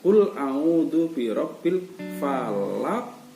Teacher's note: qafnya itu dipantulkan. Kenapa dipantulkan? Karena di situ qafnya dibaca sukun karena berhenti. Itu namanya qalqalah. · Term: qalqalah kubro